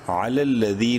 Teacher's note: یا مدہ ہے، ذال کو ایک الف برابر لمبا کریں گے